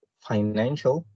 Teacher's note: it has three syllables and the stress is placed on the second syllable